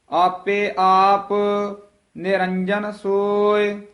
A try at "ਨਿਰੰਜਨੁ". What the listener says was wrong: ਨਿਰੰਜਨ, ਜੱਜਾ ਜਿਹੜਾ ਹੈ ਇਹਨੂੰ ਸ਼ੁੱਧ ਬੋਲਣਾ ਹੈ। ਥੋੜਾ ਜਿਹਾ ਜੱਜੇ ਨੂੰ ਕੱਸ ਕੇ ਬੋਲਾਂਗੇ ਤਾਂ ਇਹ ਸ਼ੁੱਧ ਬੋਲਿਆ ਜਾਏਗਾ, ਨਹੀਂ ਤਾਂ ਯਈਆ ਬੋਲਿਆ ਜਾਏਗਾ।